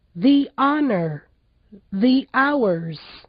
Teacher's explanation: em palavras em que o H no início da palavra não é pronunciado, o E do the também tem som de I